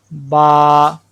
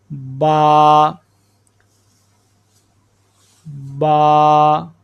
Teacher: با بند ہونٹوں کے گیلے حصے سے، بند ہونٹوں کے گیلے حصے سے۔ یہ دیکھیں، یہ جو ہونٹ ہیں جن کے اوپر اکثر تری رہتی ہے، یہ جو گیلا حصہ ہے، ان کو آپس میں ملانا ہے۔